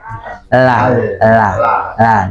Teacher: pengucapan huruf lam awalnya kan ujung lidah saja ya